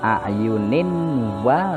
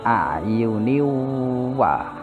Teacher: aslinya ninwa tapi dibaca niwa, masuk idgham biguna.